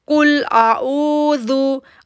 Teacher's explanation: कुल को हम मोटा पढ़ेंगे क्योंकि काफ है, जितना मोटा पढ़ सकते हैं आप इसको अदा करें। · आइन के वाव साकिन से पहले पेश है, इसलिए हम इसको 2 सेकंड के लिए खींच रहे हैं